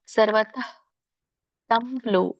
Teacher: ಸರ್ವತ ಕ್ಕೆ ವಿಸರ್ಗ ಇರೋದ್ರಿಂದ ಪೂರ್ಣ ರೀತಿಯಾಗಿ ಉಚ್ಚಾರಣೆ ಮಾಡಬಾರದು ಮಧ್ಯದಲ್ಲಿದೆ ಹಾಗಾಗಿ ಅಲ್ಪ ಪ್ರಮಾಣದಲ್ಲಿ ವಿಸರ್ಗ ಹೇಳಬೇಕು